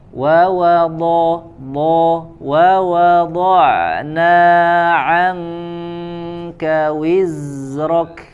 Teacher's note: Huruf dhad sumber suara dari hafatul lisan, dari samping lidah, dari sisi.